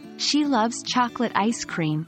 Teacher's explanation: For example, in the sentence, "She loves chocolate ice cream," the word loves and chocolate are stressed, making the meaning clear and impactful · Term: sentence stress